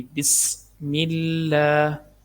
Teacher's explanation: سین حروف صفیریہ میں سے سیٹی کی آواز آئے گی، بسم اللہ، لفظ اللہ کو باریک پڑھنا کیونکہ اس سے پہلے زیر ہے۔